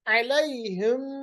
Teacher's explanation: علیہم میم ساکن کے بعد میم، ادغام شفوی، میم کو میم کے ساتھ ملائیں گے